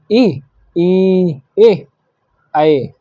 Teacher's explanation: अग्र स्वर जीभ के आगे से बोले जाते हैं